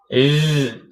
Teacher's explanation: jahar. Nafasnya tertahan jadi kita tak boleh luarkan nafas.